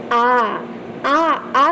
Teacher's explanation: आ में लोग कंफ्यूज हो जाते हैं उसको वृत्ताकार में कर देते हैं नहीं लेकिन वृत्ताकार नहीं है आ आ आ कहने में ठ गोल नहीं हो रहा है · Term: अ वृताकार